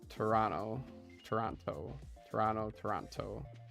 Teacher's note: People who grew up around Toronto don't pronounce the second T.